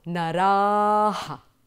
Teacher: open your jaws wide and exaggerate and also use the aspirated sound